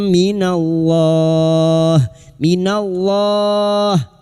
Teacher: idgham bighuna masuk dengan mendengung masuk ke huruf mim dan mendengung selama tiga harakat